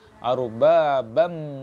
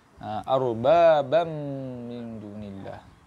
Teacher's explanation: Masukkan tanwin tu ataupun huruf nun yang ada pada lafaz tu masuk pada mim terus. Arbabam. Tutup mulut. · Tutup mulut. Tutup mulut terus sebab mim ni makhraj dia dekat bibir. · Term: idgham ma'al gunnah